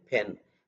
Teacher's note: that P is coming with combining two lips